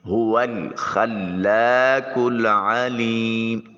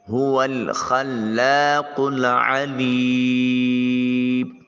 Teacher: عین کو وسط حلق سے ادا کریں گے۔ · قاف کو موٹا اور پر کر کے ادا کریں گے۔ یہ حلق کے کوے کے ساتھ زبان کی جب جڑ ملے تو یہ قاف ادا ہوتا ہے۔